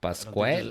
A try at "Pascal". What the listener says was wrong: don't think there's a U in there.